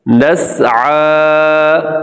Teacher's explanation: آئین کے اوپر کھڑا زبر ہے, اس کو لمبا کرنا ہے